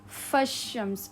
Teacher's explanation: directly فا کو آپ ملائیں گے شین کے ساتھ